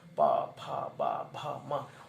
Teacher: ओष्ठ वाली ध्वनि, पा फा बा भा मा, ओष्ठ दोनों मिलने चाहिए